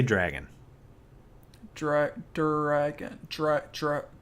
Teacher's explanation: it's not dr anymore it's jr. · yeah, you use a J when there's an R following a D.